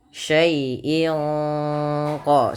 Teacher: Syai'in qadir ada bacaan ikhfa hakiki yang dimana suara tanwin pada lafal in disamarkan ke huruf qaf, yang mana qaf termasuk huruf ikhfa.